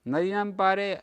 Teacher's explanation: नदीनाम पारे नदीनाम दी इति उदात्तो अस्ति